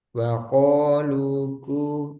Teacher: Ko nggak ada udara, kaf ada udara. Wa qaluku. Nah, di sini ada udara.